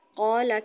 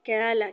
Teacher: یعنی موٹے قاف کی جگہ باریک قاف پڑھنا